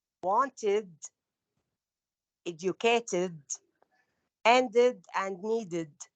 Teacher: This group has an extra syllable, id, because it ends with, the verb is ending with teh or deh.